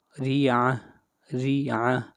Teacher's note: را کے نیچے زیر ہے اور را کو باریک پڑھا جائے گا، آخر میں ہا پڑھا جائے گا۔